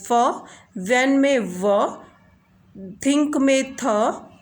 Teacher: जैसे कि आप एग्जाम्पल देखिए इसके कॉन्सोनेंट साउंड्स लाइक फ, एज इन फैन में हम क्या करते हैं, पार्टली क्लोजर करते हैं, कंप्लीट क्लोजर नहीं होता है, बल्कि ऑर्गन्स के थ्रू हम पार्टली जो है क्लोज करते हैं एयर को और उसके बाद हमारी ये साउंड्स क्रिएट होती हैं.